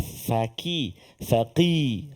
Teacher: kita nak bunyi huruf qaf di pangkal lidah kita insya-Allah